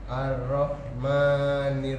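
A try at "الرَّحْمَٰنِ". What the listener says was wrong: Ar-Rahman lebih tebal coba Pak. Yang Bapak baca roknya itu tipis. Ar-Ra. Ar-Rahman. Ar-Rah dari kerongkongan.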